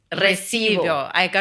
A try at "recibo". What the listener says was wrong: Recibo. It's a hard one, but you can say recibo. it's just that we roll the R.